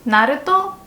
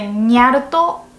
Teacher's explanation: Basically, just say nya at the end of the sentence and change the na sound into nya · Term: cat speech